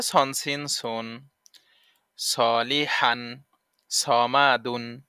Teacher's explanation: নাম সদ সদ সদের উচ্চারণ আছে সদ উচ্চারণ কেমন হবে সদ সামনের নিচের দাঁতের আগা হতে শীষ সহ মোটা ভাবে আদায় হবে